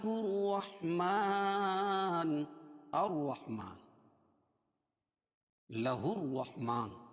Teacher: اذن لہ الرحمن، لہ الرحمن، یہ ہا کو اس را میں ملائیں کیونکہ واقع پر تشدید ہے، اور یہ الف اور لام دونوں نہیں پڑھے جائے گا. جہاں الف نام نہیں پڑھا جاتا ہے اس کے بعد حروف شمسیہ ہی کے حروف آتے ہیں، حروف شمسیہ کے 14 حرفوں میں سے یہ را آ جائے گی.